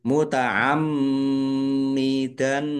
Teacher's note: mim tasdid dibaca ghunah atau mendengung ditahan biar tampak mendengungnya